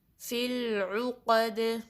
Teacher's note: دال بھی ان 5 لیٹرز میں سے ہے جس پہ جب آپ سٹاپ کرتے ہیں تو کلکلا ہوگا، یعنی آواز پلٹ کر واپس آئے گی